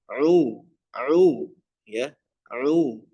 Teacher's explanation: ain orang Indonesia ini masuk hidung ya. Jangan sampai masuk hidung.